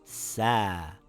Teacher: The alif will stretch the fatha, and it will become sa. You pronounce the a for 2 counts.